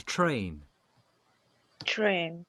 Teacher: صوت مش تشا زي تشيز قوية هلبة، بس صوت تشا خفيف